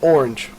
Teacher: el canadiense suena un poquito como que subiera la e al final